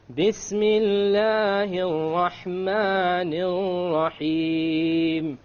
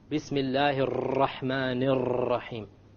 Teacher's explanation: Notice the 2 R's with the shadda on them in the Rahman. I didn't roll them. Remember we talked about we're not allowed to roll them.